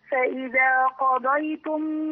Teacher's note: عندي قاف مفخمه وضاد مفخمه